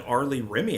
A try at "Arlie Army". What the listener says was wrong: And it's Arlie Army there, but that's okay. R. His name is R. Then second word Lee. Third word Army. That ERM is pronounced Army. Like the army, like in the army now.